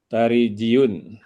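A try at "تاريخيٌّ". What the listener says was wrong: Tarikhiyun bil kha ya Ustaz. Tarikhiyun.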